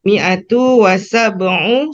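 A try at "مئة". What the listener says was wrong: Mi'atun Ibu, tunya ada tanwin, mi'atun.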